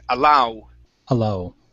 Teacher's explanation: end off this one with an oo sound at the end.